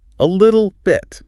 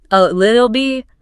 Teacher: Feel the double catch in your throat.